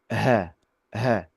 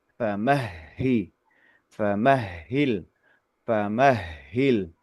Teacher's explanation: Ahhil huruf ha tasdid di sini yang agak ini mungkin ya. Huruf ha itu ee diucapkan dengan ee tenggorokan dalam ya